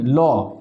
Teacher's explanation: পার্সিক ধ্বনি ল ল কে বলা হয় পার্সিক ধ্বনি কেননা ল উচ্চারণ করার সময় জিহ্বার দুপাশ দিয়ে বায়ু নির্গত হয়